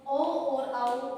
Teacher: ओ और औ इन दो वर्णों का उच्चारण हम कंठ और ओष्ठ की सहायता से करते हैं। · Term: कंठ, औष्ठ